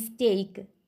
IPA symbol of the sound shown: p, t, k